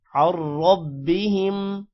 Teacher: عین را کے ساتھ ملے گا اور را موٹا ہوگا